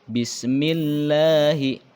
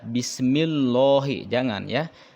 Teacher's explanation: kalau berdasarkan ilmu tajwid ini dibaca tarqiq atau tipis